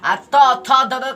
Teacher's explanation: त थ द का उच्चारण स्थान क्या हो जाएगा दंत